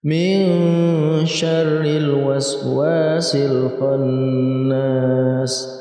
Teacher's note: Huruf-huruf ikhfa ada 15 dan salah satunya ini adalah shin. Maka ketika ada huruf nun mati bertemu dengan shin, ini termasuk kita baca dengan samar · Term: ikhfa hakiki